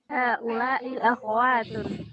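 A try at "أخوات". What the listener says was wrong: Akhawatun, sahih. Jadi yang benar itu akhawat. Akhwat berarti kha-nya sukun. Ya, ini yang betul, kha-nya fathah. Akhawat. Para ikhwan dan akhawat. Jadi bukan para ikhwan dan akhwat. Para ikhwan dan akhawat. Kha-nya fathah.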